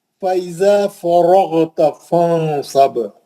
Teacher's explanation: را بھی موٹا، غین بھی موٹا، غین مستعلیہ کا ہے، را پہ زبر ہے موٹا. فرغت فانصب، با پہ خلخل کبرا.